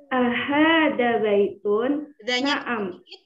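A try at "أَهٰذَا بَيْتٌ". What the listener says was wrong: Danya panjang dikit. Ahadza baitun.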